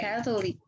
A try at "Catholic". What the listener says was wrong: Catholic. Catholic. Drop the O. You have to drop the vowel because that's how syncope works.